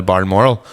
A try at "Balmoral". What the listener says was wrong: It's Balmoral. It's not. It's not BARLMORL. It's not BARLMORAL. It's Balmoral.